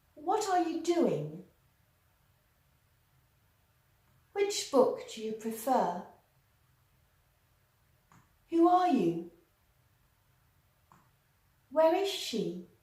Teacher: the intonation is descending or falling at the end of the sentence.